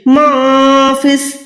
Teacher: अब यहाँ पर आपने इक्फा का कायदा अप्लाई करना है, यानी आवाज को नाक में छुपा के अदा करें। यहाँ पर मनफिस नहीं है, माफिस, ऐसे नून को छुपाएं।